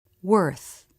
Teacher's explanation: Ending in the unvoiced TH. Again, the lips and tongue look very relaxed. Remember to keep your tongue relaxed and soft when you practice this sound.